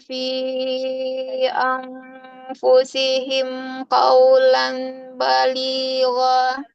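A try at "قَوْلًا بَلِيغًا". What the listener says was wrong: Qawlam baligho. Sempurnakan Ibu goinnya dua harokat. Qawlam baligho.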